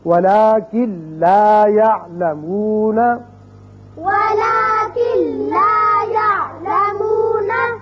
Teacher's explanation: اب کن لا نہیں پڑھیں گے بلکہ کاف سیدھا لام سے ملے گا، نون کی آواز پیدا یہاں نہیں ہوگی، یعنی غنہ نہیں ہوگا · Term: ادغام بغیر غنہ